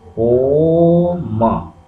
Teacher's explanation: ओ के बाद हम काफ़ी समय लेते हैं बोलने में, 3 गुना समय लेते हैं, तो यहाँ 3 लगा दिया और उसके बाद म है, तो ओ म। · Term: प्लुत स्वर